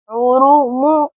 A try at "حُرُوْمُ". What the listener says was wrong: آپ کے ہونٹ فولڈ نہیں ہو رہے، اس کو صحیح کرنا سیکھیں۔ را پیش،